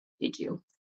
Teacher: the D and the Y sound turns into j j j that sound that we pra like J for Jason um and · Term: connected speech